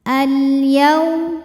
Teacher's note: Karena alif lamnya menghadapi huruf qamariyah yaitu ya. Maka kita bunyikan dengan jelas. · Al-yaum, yaw, ada harfulin. Sebab ada waw sukun didahului baris fathah. Maka dibacanya lembut atau lunak. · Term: idhar qamari